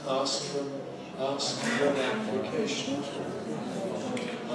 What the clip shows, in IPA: ˈɑːsk fər ən